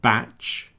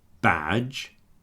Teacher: you might notice that the a is a little bit longer when I'm doing the voiced sound in the second one